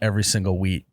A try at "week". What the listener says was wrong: Close. You said wheat with a T. Every single wheat.